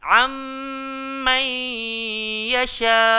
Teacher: nun mati bertemu mim, nun mati bertemu dengan huruf ya. Dekat sini ada 2 kali dengung. Jangan dengung ke hak pertama je, hak kedua tak dengung, tak cukup. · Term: idgham ma'al ghunnah